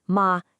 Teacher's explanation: So that first tone, ma, is a 5-5. It starts high and it stays high.